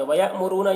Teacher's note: حمزہ ساکنہ ہے جھٹکا لگا کر پڑھیں گے اور را کو پر پڑھیں گے